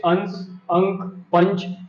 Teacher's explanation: जब आप अनुस्वार का उच्चारण करेंगे तो मुख से निकलने वाली वायु आपके मुख से कम परंतु नाक से अधिक निकलेगी